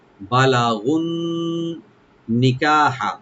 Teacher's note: বালাগু আর মিলাই পড়লে নুনের সাথে এখানে টান হবে না।